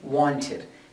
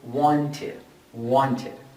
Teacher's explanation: two final sounds first example want simple form final sound so the ed sounds like an it and we say wanted